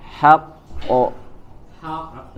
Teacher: Hanya saja di situ karena ada tasydid, maka yang dipantulkan adalah huruf qalqalah yang keduanya, ya. Huruf yang qalqalah yang pertamanya ditahan di makhrajnya, kemudian qalqalah ya di huruf yang keduanya dipantulkan menjadi qalqalah.